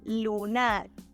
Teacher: words are identical in their spelling the only difference is that in Spanish the stressed syllable is in the last position so we pronounce it as lunar